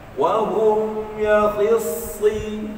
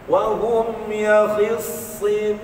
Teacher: Masa sebut si tu, mulut senyum, pangkal lidah naik.